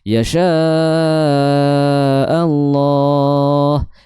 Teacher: yasya itu dihukumi sebagai mad jaiz. Panjangnya boleh empat atau boleh lima harakat.